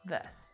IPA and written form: ˈvɜ: s (VERSE)